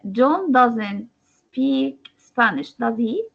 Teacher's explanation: stress will be on the word does and he comes falling goes down